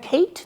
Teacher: A가 애 소리가 아니라 A라고 낸 거죠.